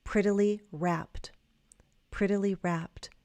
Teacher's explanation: In American English, that double t is going to change to a flap t. So in your mind, think of it as a d.